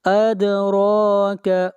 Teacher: دال کے اوپر قلقلہ کریں گے اور را کو کھینچ کر پڑھیں گے 1 الف کے برابر